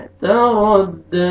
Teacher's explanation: मालुहु इज़ा, अलिफ मद्दा, दाल को आपने खींचना है। तरद्दा, रा को फतहा, रा को मोटा करके पढ़ेंगे।